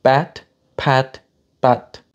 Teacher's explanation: my attempt at doing a word initial P without aspiration